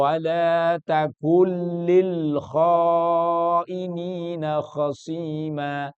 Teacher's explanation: Ada nunnya tapi tidak ada dalam bacaannya. · Wala takun tulisannya ada nun, tapi karena bertemu dengan lam maka kemudian nunnya masuk kepada lam. Nunnya hilang. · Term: Idgham bila ghunah, Idgham bila gunnah